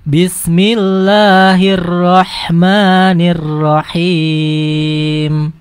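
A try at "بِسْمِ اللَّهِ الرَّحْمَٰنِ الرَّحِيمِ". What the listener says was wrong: Himnya sudah panjangnya pas. Mim sukunnya kurang ditekan dikit. Him. Him. Nggak boleh, itu jadi dengung. Atau begini, him. Langsung putus.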